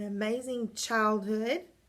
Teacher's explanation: that's right that first syllable is where you were stressing okay so that first word child is where the stress is